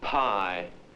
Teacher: If the word pie is pronounced with a lighted match held before the mouth, the flame goes out. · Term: P sound